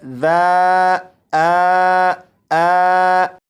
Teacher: अलीिफ का मखरज है जोफे दहन यानी मुंह का खला। मतलब मुंह की खाली जगह से अलीिफ की अदायगी होती है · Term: अलिफ मद्दा